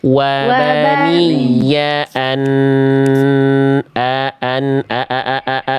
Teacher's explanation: Jangan jadi ain. Jangan jadi ain hamzahnya.